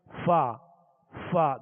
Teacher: دونوں ہونٹوں کو گول کر کے فا ادا کرتے ہیں جو واو جیسی مشابہت ہوتی ہے